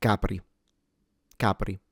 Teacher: the R, of course, is lightly trilled. Don't overexaggerate it and turn it into capri.